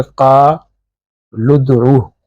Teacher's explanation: تو قالو میں واو جو ہے ساکن ہے، تو لام جا کے ملے گا دال کے ساتھ ، تو یہ ہو جائے گا قالدعو، انہوں نے کہا پکارو، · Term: حمزۃ الوصل